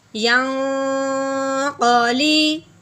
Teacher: اس پہ غنہ کرنے سے پہلے آگے دیکھتے ہیں کہ قاف حروف ہلکی میں سے نہیں ہے، تو اس لیے ہم نون ساکن پہ غنہ اخفا کا کریں گے